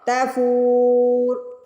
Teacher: فا پہ دیکھیے پیش کے بعد واؤ ساکن آ رہا ہے تو فو کو کھینچیں گے، اور را کے اوپر پیش ہے، زبر زیر پیش کو ہم وقف کی صورت میں ساکن کرتے ہیں، تو را پہ ہم نے ساکن لگا دیا، یہ بن گیا تفور۔